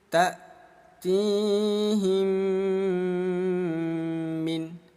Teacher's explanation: Di sini ada kodenya IM disingkat idgham mimi. Cara bacanya bunyi mim kita baca dengung ya. Kita dengungkan dua ketukan.